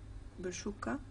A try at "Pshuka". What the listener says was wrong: La même chose, mais sans schwa. Pshuka.